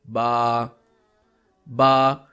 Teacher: با ادا ہوتا ہے ہمارے ہونٹوں کی جو تری والا حصہ ہے، وہ جب ہمارا ملتا ہے آپس میں تو اس سے ہمارا با ادا ہوتا ہے. با با اس میں جو اندرونی یہ تری والا حصہ ہے، یہ جب ملے گا تو اس سے با ادا ہوتا ہے.